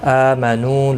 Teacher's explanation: حمزہ کے اوپر کھڑی زبر ہے، 1 الف کی مقدار کے برابر کھینچ کر پڑھیں گے